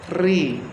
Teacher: Kalau huruf tipisnya Ro-nya itu lidahnya agak turun sedikit, Ri, dan mulut agak meringis, Ri.